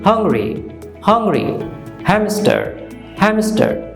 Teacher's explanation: আপনার মুখটা হা হয়ে যাবে, মুখটা ওয়াইড ওপেন হয়ে যাবে, এবং আপনার গলা থেকে বাতাস বেরিয়ে আসবে। ওকে, air comes out from ইয়ার throat. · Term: হা সাউন্ড